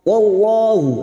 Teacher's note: Wallahu azizun dzuntiqam. Wallahu, lam jalalah yang didahului fathah kita baca tafkim